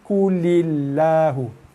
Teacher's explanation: Tapi dalam bacaan kita ni kita tak baca Allah, tak baca lam tebal sebab sebelum kalimah Allah ada huruf yang berbaris bawah.